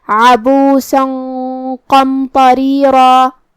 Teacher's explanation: قاف کو ہم زبان کی جڑ اور تالوں کے نرم حصے سے پڑھیں گے اور اسے بھاری آواز میں بھی. پھر جو کہ میم ساکن ہے لہذا ہمیں میم کو ظاہر کرنا ہے. · تو ہم یہاں تنوین کو چھپاتے ہوئے لیکن غنہ کے ساتھ یہ حکم کو ادا کریں گے جو کہ قاف حروف التفخیم میں سے ہے اور غنہ اپنے اگلے والے حرف کا حکم لیتا ہے تفخیم میں اور ترقیق میں. لہذا ہم یہ غنہ کو بھاری آواز میں پڑھیں گے